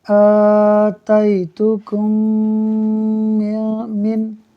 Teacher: میم ساکن کے بعد دوسری میم آ رہی ہے، لہٰذا ادغام شفوی ہوگا، یعنی ہم غنہ کر کے پڑھیں گے میم کو میم سے ملا کر